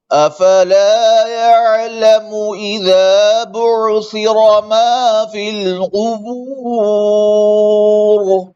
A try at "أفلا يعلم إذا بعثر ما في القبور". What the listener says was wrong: دونوں عین ہل گئے افلا يعلم اذا بعثر افلا يعلم اذا بعثر ما في القبور قبور قبور قبور أفلا يعلم إذا بعثر ما في القبور